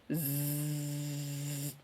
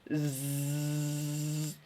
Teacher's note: Jadi zai itu dia punya sifat sofir, berdesis ya, berdesis hurufnya. Zzz. Jadi celah dari ujung gigi seri atas dan ujung gigi seri bawah.